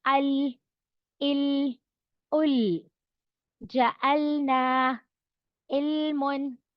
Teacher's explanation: जबान की नोक उठकर ऊपर सख्त हार्ट पैलेट पर टच होती है